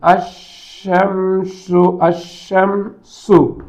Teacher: ஏனென்றால் இவைகள் எல்லாமே இந்த 14 எழுத்துக்களும் லாமுடைய மகரஜுக்கு அருகில் இருப்பவை என்பதால் தான் லாமு தன் உச்சரிப்பை இழந்து தன் அருகிலே உள்ள எழுத்தோடு போய் சேர்ந்து கொள்கிறது · ஷம்சியாவுடைய எழுத்துக்கள் என்றால் இந்த லாம் பின்னால் வரக்கூடிய எழுத்தில் நுழைந்துவிடும். · இங்க லாம் இல்ல, இந்த லாம் இந்த சீனா உள்ள நுழைஞ்சு சீனுக்குள்ள இணைந்து விட்டது. இது ஒரு இணைப்பு தான். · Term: இத்காம் முத்தகாரிபைன்